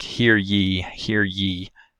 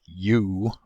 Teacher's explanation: there's very little movement for ye as opposed to something like u where the tongue body must be pulled back quite a bit the ya is also sometimes found with an diphthong like quality · If you consider saying something like hear ye, and consider your articulation when you do that, there's very little movement for ye, as opposed to something like you, where the tongue body must be pulled back quite a bit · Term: palatal glide, palatal glide y